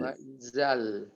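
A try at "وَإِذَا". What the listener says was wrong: Zal. Jangan sampai ada z-nya, jangan sampai ada sifat siul. Wa izal, tapi dia sifat hamas yang terjepit di lidah. Wa idzal, zal.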